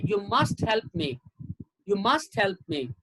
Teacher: so where is the stress only two words must and help